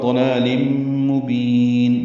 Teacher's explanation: ضلال مبین، ضاد پر پڑھیں گے، لام دونوں باریک ہیں، تنوین کے بعد میم آنے کی وجہ سے ادغام ہے، غنہ ہوگا